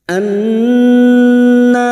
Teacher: Nun yang bertasdid Gun musyadadah kita dengungkan selama tiga harakat